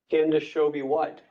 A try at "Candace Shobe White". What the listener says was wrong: Yes, it's Candace Shobe, one syllable.